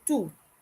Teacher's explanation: notice the final t is not pronounced we just say tu and the o u sounds like the english double o i